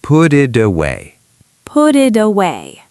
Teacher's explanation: Put plus it, put it. Flap T because it's between vowels. It plus away, id away.